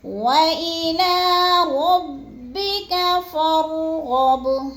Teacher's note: فانصب، وإلى ربك فارغب، وإلى ربك فارغب، فا کو بھی را کے ساتھ ملا کے پڑھنا ہے اور را کو پر کر کے پڑھنا ہے۔ غب، غین بھی پورا پر پڑھا جائے گا اور با کو ہم نے تھوڑا سا ہلا کے پڑھنا ہے کیونکہ حروف قلقلہ میں سے ہے۔